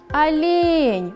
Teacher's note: Ударение падает на второй слог.